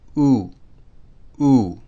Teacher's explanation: This could also appear in this form, and it would be pronounced the same. The pronunciation is like the letter U in the word flute, but using a creaky tone.